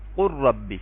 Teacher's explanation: جیسے آپ یہاں پہ دیکھیں، قل ربی، ہم قل ربی نہیں پڑھیں گے ویسے کیا، بلکہ کیا پڑھیں گے، قل ربی. لام کو را کے اندر مرج کر دیں گے، قل ربی، اور غنہ نہیں کریں گے. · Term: ادغام